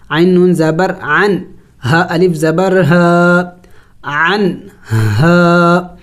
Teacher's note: اخفا نہیں کریں گے بلکہ نون کو ظاہر پڑھیں گے